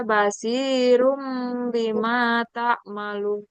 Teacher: Iklab itu cara membacanya dengan mengganti atau mengubah suara N menjadi suara suara M ya. M.